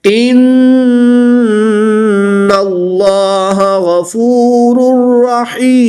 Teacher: नून मुशद्दिद है तो यहाँ पर गुन्ना करके पढ़ेंगे। इसमें जलालत अल्लाह अज़्ज़ वजल के लाम से पहले नून मुशद्दिद पर ज़बर है इसलिए इस लाम को पुर यानी मोटा पढ़ेंगे। गैन हरूफ मुस्तालिया में से है तो इसको पुर पढ़ेंगे। · रा मुशद्दिद पर ज़बर है तो इसलिए इस रा को पुर यानी मोटा पढ़ेंगे।